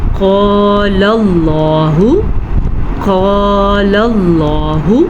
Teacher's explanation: جب بھی قرآن مجید میں الف اللہ کے نام سے پہلے زبر یا پیش ہو تو اللہ کا نام کو موٹا کر کے پڑھا جاتا ہے